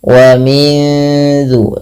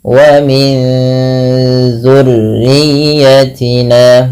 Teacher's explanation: ya, nunnya masukkan tapi disamarkan ke zal. Wa min dzu, seakan-akan langsung melafalkan daripada huruf zalnya sembari ditahan. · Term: ikhfa